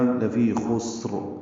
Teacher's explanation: خسر میں خا پر ہے اور سین ساکن ہے، تیز صفیر کی آواز سے سین ادا ہوگی ، اور را وقفاً پر ہوگی، لفی خسر را پر ہوگی، · سین باریک پڑھیں گے، خا اور را دونوں پر پڑھیں گے وقفاً